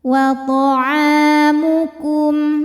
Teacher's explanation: karena ada alif didahului baris fathah, maka panjang ainnya 2 harokat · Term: mad tabi'i dhahiri